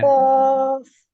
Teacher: जब कौफ को पढ़ेंगे तो जुबान की जड़ बिल्कुल कौवे को ही लगेगी। और जब हम काफ को पढ़ेंगे तो कौवे के करीब जाकर तालु को लगेगी, हल्की सी कौवे को भी लग जाएगी, लेकिन कौफ में मुकम्मल तौर पर कौवे पे लगेगी।